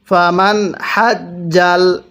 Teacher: এখানে নুন সাকিনটা আমি স্পষ্ট করে পড়ছি, কারণ এই নুন সাকিনের পরে হাটি হলো ইজহারে হরফ।